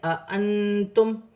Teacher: نون ساکن میں اخفا کیا جائے گا کیونکہ آگے تا ہے، حرف اخفا میں سے میم ساکن میں غنہ نہیں ہوگا.